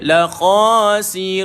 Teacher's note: Okey, sekelas ada waw, mad, 246 harakat ma'arik li sukun. Maka bila tuan-tuan matikan nun, jelaskan bunyi nun, tapi jangan panjangkan.